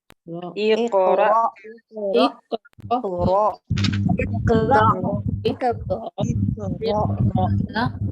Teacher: महसूस करें कि आपकी ये जो वोकल कॉर्ड्स हैं वो एकदम से बंद हो गए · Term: हमजा साकिन